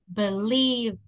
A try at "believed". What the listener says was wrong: Con D, no con T. Believed.